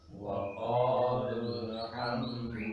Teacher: ketika nyambung maka dibaca pendek lul